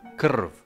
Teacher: whereby r is the heart of the syllable, that is the vowel in this case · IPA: /r/